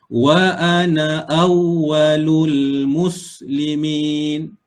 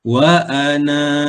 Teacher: Kalau tanda lonjong macam ni, semasa kita wasal, na tu dibaca pendek. Kalau kita waqaf pada na, maka kena baca dua harakat.